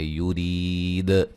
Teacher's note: جب وقف کریں گے دال کے قلقلہ کو خوب واضح کریں گے